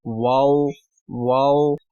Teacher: واو بھی ہونٹوں کو گول کرنے سے جو ادا ہو جاتا ہے